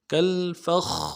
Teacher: فا کو خا کے ساتھ ملانا ہے، خا کے اوپر تشدید زور دیں گے۔ کالفخ، خا کے بعد الف مدہ ہے، ایک الف دار میں کھینچیں گے، را کو باریک ادا کریں گے۔